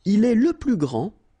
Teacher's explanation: Okay, so phonetically what you can hear is that this first form here for the masculine, grand, so you don't pronounce the final D